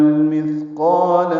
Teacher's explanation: قاف پورا الف مدہ ہے، دو حرکات لمبا ہے